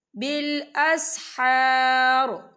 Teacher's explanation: والمستغفرین بالاسحار، یا دیکھیے بالاسحار، یہاں پر آیت ختم ہو رہی ہے، جب آیت ختم ہوگی تو وقف کی صورت میں را جو ہے ساکن ہو جائے گا، اور حار، یہاں دیکھیں الف مدہ ہو رہا ہے، خال الف سے پہلے زبر ہے، تو ہم اسے 2 یا 3 حرکت کے برابر کھینچے پڑھیں گے۔